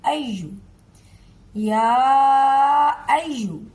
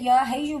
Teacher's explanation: हा की आवाज बीच में से नहीं निकलनी चाहिए।